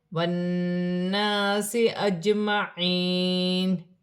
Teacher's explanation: نون مشدد میں غنہ ہوگا، الف مدہ بھی بن رہی ہے، جیم ساکن ہے، حروف قلقلہ میں سے ہے، قلقلہ کے ساتھ ادا کیا جائے گا